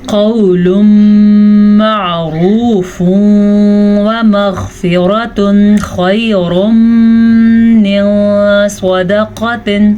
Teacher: تنوین کے بعد میم ہے جو کہ یمون میں سے ہے تو ادغام بالغنہ کا قاعدہ ہوگا